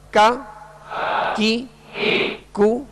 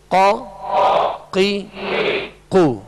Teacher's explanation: کاف کو جو ڈنڈی والا کاف ہوتا ہے اس کو باریک پڑھیں گے، اور قاف جو دو نقطے والا اس کو پر پڑھیں گے، موٹا پڑھیں گے